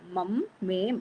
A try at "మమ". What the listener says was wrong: ఆ మమ్ అన్నట్టు అనిపించింది అందుకని